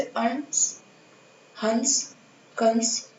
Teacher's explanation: तो इनका उच्चारण नोज से किया जाता है, मतलब नाक से किया जाता है। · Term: अनुस्वार